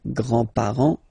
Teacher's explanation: you don't pronounce this final S here